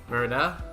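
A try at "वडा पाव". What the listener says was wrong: Not Verda. Where are you getting this R from? Verda. Verda. Where are you getting R from? VADA. Pow.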